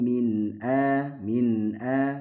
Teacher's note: enggak boleh ada keterputusan antara min dengan a ya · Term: izhar